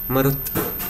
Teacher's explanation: मरुत् इति शब्दस्य अन्ते तावत् स्वरो न श्रूयते, तकारः व्यञ्जनं श्रूयते। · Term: हलन्तशब्दः